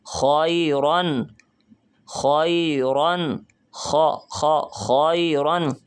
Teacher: ہم محسوس کر رہے ہیں کہ آواز ہمارے گلے سے پیدا ہو رہی ہے